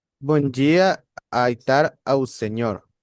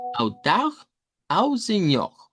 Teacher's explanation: podemos mejorar la R para que no suene tan como el español y que suene más como la R uvular, y que suene como autau au señor.